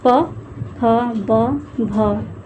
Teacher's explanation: प वर्ग का उच्चारण जो होता है वह ओष्ठ से होता है। ओष्ठ जैसे मतलब कि दोनों ओठों के स्पर्श से बोले जाने वाले वर्ण होते हैं, जैसे दोनों जो उसके उच्चारण में दोनों ओठ आपस में सटते हैं, जैसे बोलते हैं उ।